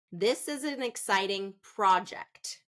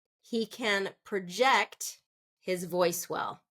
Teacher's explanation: first syllable stress for a noun second syllable stress for a verb